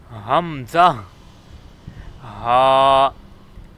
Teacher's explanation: इनकी आवाज़ हमने सीने की तरफ से निकालनी है और इसे अक्सा हलक कहा जाता है।